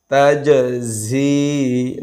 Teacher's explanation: জিম সাকিনে কলকলা প্রতিধ্বনি সৃষ্টি করে